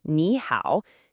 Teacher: So the language naturally fixes it for you. The first third tone automatically changes into a rising second tone.